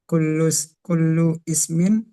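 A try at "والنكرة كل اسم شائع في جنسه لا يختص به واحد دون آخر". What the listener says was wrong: Langsung nyambung. Hamzah wasal ini. Kullusmin.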